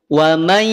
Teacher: Sedangkan kalau yang ini, yang naqis, yaitu hurufnya adalah ya dan waw, maka kadar dengungnya tidak sempurna, sehingga ketika kita tutup dia akan tetap berbunyi. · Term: idgham bi gunnah naqis